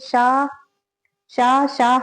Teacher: ऊष्म व्यंजन वे व्यंजन जिनके उच्चारण में जीवा उच्चारण स्थान के इतने समीप होती है कि निकलने वाली वायु जीवा और उच्चारण स्थान के माध्य से घर्षण करती हुई बाहर निकलती है उसे ऊष्म व्यंजन कहते हैं।